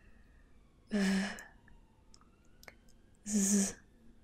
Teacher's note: You can hear the sound of my voice, right? Well, that's because they are voiced fricatives.